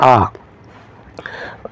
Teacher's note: बड़ा आ आएगा आपका वही आपका विवत स्वर होगा बड़ा इसमें यह बड़ा जो आ है और इससे ज्यादा मु नहीं खुलेगा इसलिए इसको विवत स्वर कहते हैं